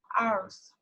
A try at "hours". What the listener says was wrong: Okay, you don't need to pronounce or read the letter H. Okay, it's read ours.